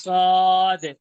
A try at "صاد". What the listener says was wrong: কম হয়ে গেল টানটা, 4 আলিফ না, সদ। সদের শুরুতে আছে তো, ওখানে 4 আলিফ টানতে হয়।